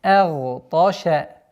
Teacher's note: Обратите внимание, агташа нет, потому что звук хамза всегда произносится и подчиняется огласовке, а огласовка фатха читается мягче. С мягкого на твердое произношение гайна, сукуном, после которого идет твердый та. Агташа. Обратите внимание, чтобы звук шин не произносилось твердо.